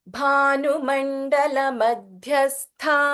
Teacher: ಭ ಇಸ್ ಮಹಾಪ್ರಾಣ and then ಧ ಇಸ್ ಮಹಾಪ್ರಾಣ ಇನ್ ಮಧ್ಯ and again last letter of ಮಧ್ಯಸ್ಥ ಇಸ್ ಮಹಾಪ್ರಾಣ ಭೈರವಿ ಭಸ್ ಮಹಾಪ್ರಾಣ